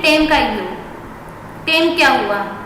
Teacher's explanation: टेम मतलब आ और ई को मिलाकर उन्होंने ए बना दिया